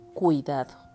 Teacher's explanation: sola sílaba y el tercer caso es la palabra cuidado y aquí tenemos el diptongo que se pronuncia en una sola sílaba